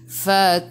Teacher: Boleh baca 2, 4 atau 6 harakat. Matikan dengan huruf nun. Hujung lidah menyentuh gusi atas.